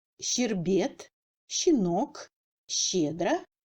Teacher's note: le chat est une consonne toujours molle et sourde sans paire sonore.